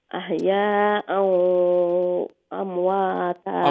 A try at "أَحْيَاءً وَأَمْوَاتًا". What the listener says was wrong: Ahya'an, when you go to do the ghunna, the sound must come out from the nose. khayshum, not from the mouth. أحياء وأمواتا.